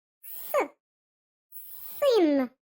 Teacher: Так, це звук с. Він твердий.